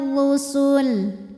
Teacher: huruf r dibunyikan secara tafkhim kenanya berbaris damah maka dibacanya tebal bausul lalu berikutnya ada tanda